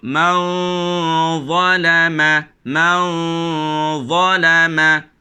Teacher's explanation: Dengung tebal kerana nak masuk kepada huruf dha.